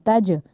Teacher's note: یہاں پہ ہم نے قلقلہ کرنا ہے، یعنی اس جیم کو ہلا کے پڑھنا ہے، تج نہیں کہنا، تج، ٹھیک ہے۔